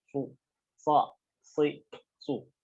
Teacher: jadi ada udara yang keluar dan suaranya tajam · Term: huruf so